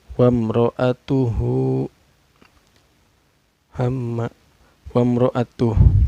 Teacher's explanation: Cara bacanya mim sukunnya dibaca secara jelas, gak boleh dengung dan gak boleh memantul. Wamro, ro-nya ini dihukumi tafkhim atau tebal ya, karena ro berbaris patah.